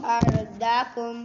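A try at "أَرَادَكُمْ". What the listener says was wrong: نہ غلط، دا کھڑی زبر کو لمبا نہیں کیا. ارداکم.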